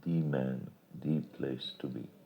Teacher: Note that in spoken English this use of the is accented to show its force.